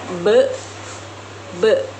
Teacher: Huruf B dibentuk dengan menggunakan bibir atas dan bibir bawah serta menghasilkan suara yang bersuara atau disebut letuk bilabial. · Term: letup bilabial